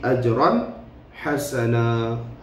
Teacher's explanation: Ajran hasana, tanwin bertemu dengan ha, iaitulah izhar halqi.